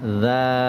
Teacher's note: জিহবার আগা সামনের উপরের দুই দাঁতের আগার সাথে লাগিয়ে নরম করে উচ্চারিত হয়